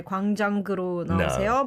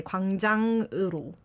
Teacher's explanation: you don't need the G sound at the end